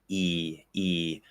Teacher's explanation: clear version like if i say e i tend to pull my lips back the sound is pushed pretty far forward i'm using the front of my tongue it's very high in the mouth